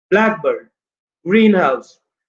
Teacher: उसका पहला जो वर्ड होगा, पहला वो स्ट्रेस्ड होगा, पहला पार्ट स्ट्रेस्ड होगा।